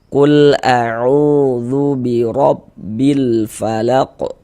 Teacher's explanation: Huruf ro dibaca tebal, dibaca takkhim. Sehingga dengan menaikkan pangkal lidah kita ketika kita mengucapkannya. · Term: tabkhim